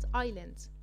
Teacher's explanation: انا ما نطقتش حرف الاس خالص وكان بالنسبة لي silent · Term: The silent S